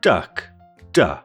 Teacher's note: The duh sound is a voiced alveolar plosive made by blocking the airflow with the tongue on the alveolar ridge and then releasing it explosively. The duh sound in the chart is shown in green, which means that it's voiced. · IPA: / d /